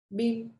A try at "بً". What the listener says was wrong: Not bin. Bin is kasratain. Fathatain.